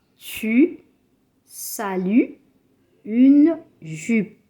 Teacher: The mouth is rounded, barely open, the lips are advanced, the tongue is forward and touches the lower teeth. In this position, you will not get the sound E, but the sound U.